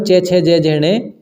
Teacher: च वर्ग तालू से उच्चारित होता है